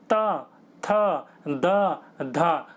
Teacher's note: आपकी जीभ जो होगी वो दांत पर टकराए गी दांत पर बिना टकराए आप बोल नहीं सकते इनको इसलिए इनको दंते कहा जाता है वहीं पर ही प फ